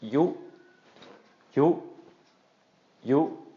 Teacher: we're going to get a short high tone once again